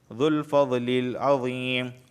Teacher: ذو الفضل، یہاں دیکھیں فضلی، ضاد کا مخرج حاف لسان یعنی زبان کی کروٹ اوپر کے داڑوں سے ٹچ ہوگی